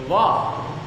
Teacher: એટલે કે દંત અને હોઠ. દાંત અને હોઠના સ્થાનેથી વકારનું ઉચ્ચારણ કરવામાં આવે છે.